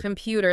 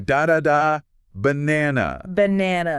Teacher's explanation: The first and last syllables are just throwaways.